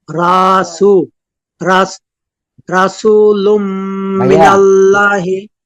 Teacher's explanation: তানবিনের পরে বা গুন্না অক্ষর মিম আসছে গুন্নার সাথে মিলিয়ে পড়বো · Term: ইদগামে বাগুন্না